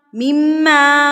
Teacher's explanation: मिम्मा मीम के ऊपर तशदीद है तो यहाँ पर हम गुन्ना करेंगे